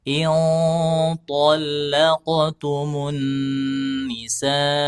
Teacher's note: disamarkan nun sukun dan tanwinnya kemudian diarahkan ke huruf yang mau dibaca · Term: ikhfa